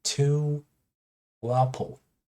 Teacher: add W. It's rounded vowel